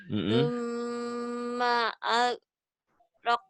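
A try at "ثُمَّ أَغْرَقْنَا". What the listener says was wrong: Orang Jawa tuh susahnya di gin, di kop sama di ho sering ketuker. Ini 3 huruf ini ya. Ini G, ini ko. Ini guru, ini koko, baju koko. Ini khair. Ini 3 huruf ini sering ketuker. Summa aghraqnal akharin.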